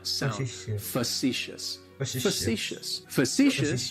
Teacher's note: that first syllable has that schwa